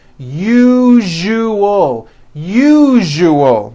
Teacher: that second syllable Z the one with the underline needs to be voiced put your hand on your throat and feel for the vibration